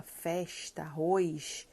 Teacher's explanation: é o chiado do carioca